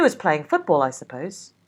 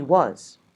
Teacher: the first of each pair is what we call a weak form, and in the second, the word is in its strong form, where it is stressed